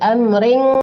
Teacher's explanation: Amring disamarkan ke eng gitu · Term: ikhfa hakiki